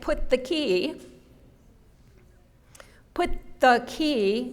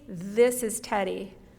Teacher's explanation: there's a little bit of a difference in the amount of air that you expend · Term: th sound